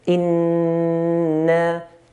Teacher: Nun has a shadda here, so we hold the nun. إن. Hold and let go.